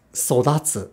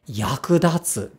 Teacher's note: this accent again always occurs on the second to last beat of the word